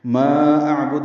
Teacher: ما اعبد میں ما مد منفصل ہے، 4 حرکات لمبا کریں گے، حمزہ اقصی حلق سے ادا کریں گے، عین وسطی حلق سے ادا کریں گے، اور دال ساکن پہ قلقلہ ہوگا۔